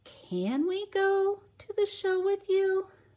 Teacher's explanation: Oh, my voice is going up. I'm using a question word first. · Oh, your voice naturally goes up, so it's a question we're asking.